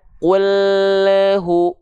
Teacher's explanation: Lam sukun seringkali memantul. Karena apa? Karena lidahnya keburu turun duluan.